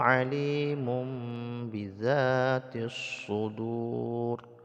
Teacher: Kabir wa asirakumju [Musik] innahu alimum bidzaur tanwin bertemu dengan baqalab jadi dibalikkan suara tanwinnya menjadi Bunyi mim mati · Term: iqlab